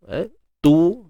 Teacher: huruf ta yang berbaris hadapan muncungkan bibir, dhammah